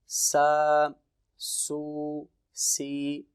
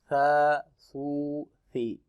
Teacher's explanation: اس کو ہم نے سیٹی کی آواز سے نہیں پڑھنا، جس طرح سا، سو، سی، بالکل نرمی کے ساتھ ہم اس کو ادا کریں گے۔